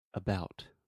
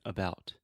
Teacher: I'm reducing the stress, and I'm putting the stress on the bout.